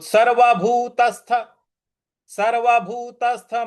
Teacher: त के आगे जो स है उस पर हमें आघात देना है।